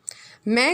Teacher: मैं का उच्चारण स्थान है ओष्ठ प्लस नासिका।